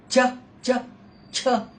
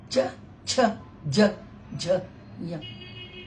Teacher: तालुक को लगती है जबान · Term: तालव्य